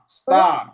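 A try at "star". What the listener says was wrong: আমরা আরটা এভাবে বলবো না, র এর উচ্চারণটা একটু কম করব, ঠিক আছে?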